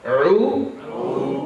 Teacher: Slightly gagging, guttural sound from the middle of my throat.